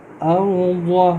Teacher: ارض را کو تھوڑا سا ہم پر کریں گے، موٹا کریں گے